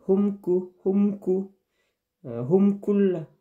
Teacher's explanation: dibaca jelas dan terang, langsung masuk, tidak boleh dengung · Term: izhar syafawi